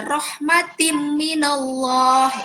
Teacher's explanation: Huruf ta langsung dimasukkan ke huruf mim, itu adalah idgham bi gunnah